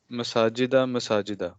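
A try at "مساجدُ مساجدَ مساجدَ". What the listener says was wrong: हाँ पूरा पूरा 3 पढ़े, हाँ मसाजिदु मसाजिद।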